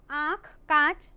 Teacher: अनुनासिक स्वर ध्वनि है, इसके उच्चारण में हवा नाक से कम और मुंह से ज्यादा निकलती है।